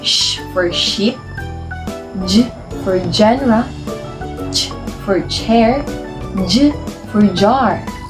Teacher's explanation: For the fifth one, we have post-alveolar, produced just behind the alveolar ridge with the tongue slightly further back